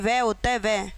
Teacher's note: व एक अकेला वर्ण ऐसा है जो जिसका उच्चारण स्थान दंतोष् होता है।